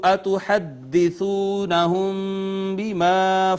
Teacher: میم ساکن کے بعد با آ گئی، اخفائے شفوی ہو گیا